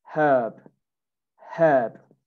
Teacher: no r herb you don't say the r